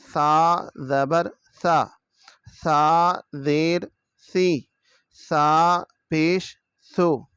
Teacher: زبان کی نوک اوپر والے جو دانت ہیں ان کے اندرونی حصہ کے ساتھ جا کے لگے گی